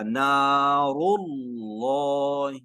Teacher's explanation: تو آپ کا جواب آ گیا کہ نار اللہ، کیونکہ لفظ اللہ سے پہلے ہمارے پاس آ گئی ہے پیش، تو جب بھی لفظ اللہ سے پہلے پیش آئے گی تو ہم لفظ اللہ کو موٹا کریں گے، تو یہاں پہ لفظ اللہ موٹا ہوگا، نار اللہ۔